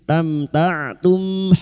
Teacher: Huruf ain yang memiliki sifat jahar dan tawasud. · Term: huruf ain sukun